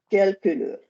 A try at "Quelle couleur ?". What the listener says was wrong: No. It's lazy. It's lazy. Quelle couleur? Let me hear the vowels properly.